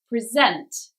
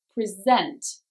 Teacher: So first syllable for a noun, second syllable for a verb.